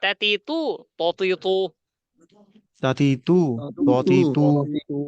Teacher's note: তা হচ্ছে পাতলা, আর ত হচ্ছে মোটা। মোটা একই জায়গায় উচ্চারণ, মাখরাজ একটাই।